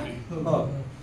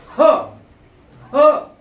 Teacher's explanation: फुफ्फुसातील हवा जी आहे ती जोराने बाहेर फेकली जाते